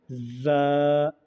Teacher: ज़ा का मखरज ज़ुबान की नोक ऊपर के चार दांत और नीचे के चार दांतों के किनारे पर लगाने से ज़ा अदा होते हैं